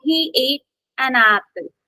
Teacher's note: I'm stressing on the Apple not on and